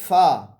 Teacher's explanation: فا کا مخرج ہے ثنایا علیہ کا سرا نیچے والے ہونٹوں کا اندر، یعنی کہ نیچے والے ہونٹوں کا شکم، نیچے والے ہونٹوں کا پیٹ، ٹھیک ہے، یعنی کہ ثنایا علیہ کا سرا نیچے والے ہونٹوں کے اندر جب لگے گا اس سے فا ادا ہوتا ہے